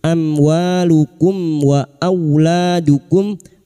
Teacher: Amwalukum mim sukun bertemu wau idhar syafawi. Mim sukun dibaca jelas tanpa mendengung.